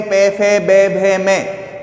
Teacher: और जब हम इस वाली लाइन को बोलते हैं पे, फे, बे, भे, में, तो हमारे जो होठ होते हैं वो दोनों होठ एक दूसरे से मिल जाते हैं, चिपक जाते हैं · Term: ओष्ठ